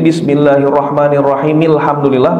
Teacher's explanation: kalau hamzatul wasal dibaca itu hamzahnya hilang